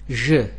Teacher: ज साउंड जो है यह वॉइस साउंड है यानी जिसमें के यह वोकल कॉर्ड्स वाइब्रेट करेंगे · اور اسی طرح یہ جو ووکل کارڈز ہیں یہ وائبریٹ کرتے ہیں، لہذا ژ ساؤنڈ جو ہے یہ وائسڈ ساؤنڈ ہے، یعنی جس میں کہ یہ ووکل کارڈز وائبریٹ کریں گے